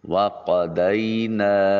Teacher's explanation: الف مدہ ہے اور اس کے اوپر مد منفصل ہے، 2 سے 3 الف کی کا مقام لمبا کریں گے۔